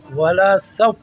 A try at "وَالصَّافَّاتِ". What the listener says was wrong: ولا کیوں کہہ رہے ہیں دوبارہ کریں واو سوا زبر وس